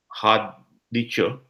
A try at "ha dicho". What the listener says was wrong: Drop your H's. Ha dicho.